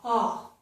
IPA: ɔ